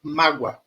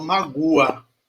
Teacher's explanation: o O tem som de U, e esse U é uma semivogal, tá? Ele tem som de U semivogal.